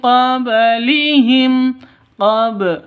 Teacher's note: Qab dipantulkan karena di tengah ba-nya, ba sukunnya berarti qalqalah sughra.